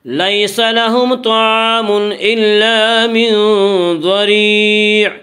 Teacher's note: ضریع کی را کو باریک پڑھیں گے۔ اس کا قاعدہ ہے کہ را کے اوپر زبر پیش آئے تو را کو پر پڑا جائے گا، را کے نیچے زیر آئے تو را کو باریک پڑھا جائے گا، یا را کے نیچے زیر اس لیے را کو باریک پڑھیں گے۔